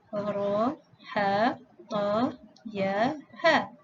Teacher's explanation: Dibaca panjang 2 harakat